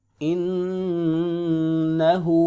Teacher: ہا پہ الٹا پیش ہے، ایک الف کو برابر لمبا کریں گے